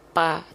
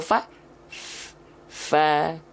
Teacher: Tapi kalau huruf P nempelnya apa bibir atas dan bibir bawah kalau bibir atas dan bibir bawah yang menempel maka huruf Fa tidak akan mengalirkan nafas kalau jadi P